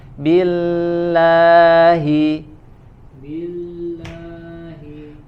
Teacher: Lebih tipis lagi lafzul jalalahnya, huruf lam.